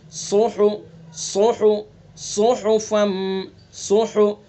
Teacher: یتلو صحفا مطہرہ، صحفا، صاد کا مخرج زبان کی نوک اور ثنا علیہ کا، زبان کی نوک ثنا علیہ کا کنارہ اور کچھ اتصال ثنا علیہ سے، زبان کی نوک ثنا سفلا کا کنارہ اور کچھ اتصال ثنا علیہ سے، یہ صاد کا مخرج ہے اور اس کے اندر سیٹی کی آواز نکلے گی